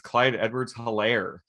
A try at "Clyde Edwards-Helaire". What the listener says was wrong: Elaire. The H is silent.